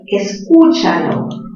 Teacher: La fuerza de voz está en u. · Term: mayor fuerza de voz